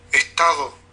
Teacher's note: aquí traté de hacerla más fricativa. Igual se le dibujan formantes. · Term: la postdental